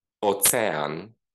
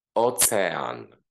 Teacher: When pronouncing the word ocean, we need to go from the vowel e to a without inserting glottal stop